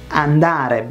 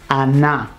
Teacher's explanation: Like in Neapolitan and most Italian southern dialects the ND becomes NN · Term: consonant assimilation